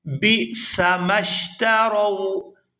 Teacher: یہاں با کو حمزہ ساکن کے ساتھ ملائیں گے تو جھٹکے کے ساتھ ادا کریں گے